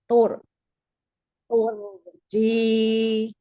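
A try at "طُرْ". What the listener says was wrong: Jadi gini, Bu. Lidahnya dongkrak ke atas. Kalau lidahnya dongkrak ke atas, ya, ang, kayak gini Bu. Jadi ininya ke bawah. Ini harusnya turun.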